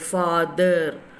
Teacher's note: air is escaping between the tongue and teeth. And also, your tongue is touching the upper teeth. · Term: voiced TH